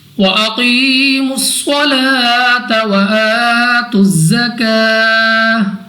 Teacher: صاد مستعلی میں سے ہے، موٹا پڑھیں گے منہ اور آواز کو کھول کر · یا ساکن سے پہلے ہمارے پاس یہاں پہ ہے زیر، تو یا مدہ 2 سیکنڈ تک لمبا کر کے پڑھیں گے · قاف ہمارے پاس مستعلیہ حروف میں سے ہے، تو ہم نے موٹا پڑھنا ہے منہ اور آواز کو کھول کر